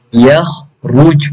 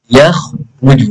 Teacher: huruf kha bila dimatikan tetap kena tebal